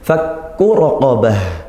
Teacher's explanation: Kaf bertasydid ya Kaf bertasydid kita kuatkan